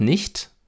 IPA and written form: nɪçt (nicht)